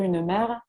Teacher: la prononciation du E en position finale de mot, c'est un marqueur évident du sud de la France